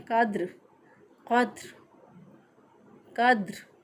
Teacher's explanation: बाज़ लोग दाल पे कलकला नहीं करते